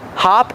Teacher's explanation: Use the short ah sound like stop and hot.